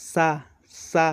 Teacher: सा बोलते समय हमारी जीभ जो है तालु में स्पर्श करती है